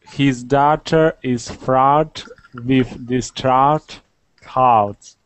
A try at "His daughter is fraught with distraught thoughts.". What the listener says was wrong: Except for the last word, you did the W sound. Thoughts. Thoughts. So it's just a matter of not making the W. W. There's no W. It's just ah. Just open.